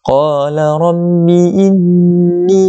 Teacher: nun yang musyaddadah, maka kita wajibul gunnah, wajib kita dengung. Cara bacaan dia kita dengung dengan 2 harakat. Kemudian selepas itu ada huruf ya, yang mana ya itu adalah di antara huruf mad, kita kena panjang 2 harakat.